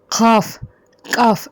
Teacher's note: நம்ம தொண்டைக்குள்ளே ஒரு சவுண்டு, அதிர்வு மாதிரி ஒரு சவுண்டு ஏற்படணும். அப்படி வந்துச்சு அப்படின்னா நம்ம சொல்லக்கூடிய இந்த காஃப் வந்து கரெக்டானது.